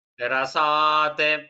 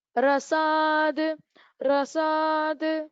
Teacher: When we split, it is takara. When we join, it becomes da.